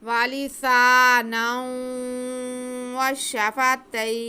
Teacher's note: या लीन के बाद नून साकिन हो रहा है, तो मद आरिज़ लीन करते हुए हम वक्फ करेंगे।